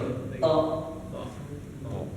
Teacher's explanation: To ujung lidah ketemu dengan gigi gigi depan tapi bagian gusinya. Jadi bukan ke kalau ke giginya itu huruf ta kan giginya.